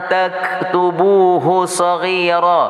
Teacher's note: nun mati bertemu dengan ta hukumnya ikhfa berdengung 2 harakah